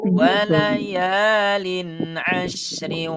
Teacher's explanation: Kasratain bertemu dengan huruf waw, hukumnya idgham bi guna. Jadi betul-betul rasain ya dia masuk ke hidung.